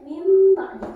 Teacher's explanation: Maksud menggantikan di sini adalah menggantikan suara nun kepada huruf mim. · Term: iklan